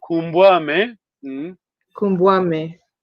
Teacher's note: you have a vowel contraction. U and A.